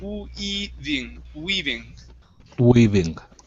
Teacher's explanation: Give me a good oo sound at the beginning.